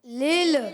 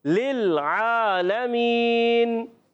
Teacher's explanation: پہلا والا لام دوسرے لام سے ملے گا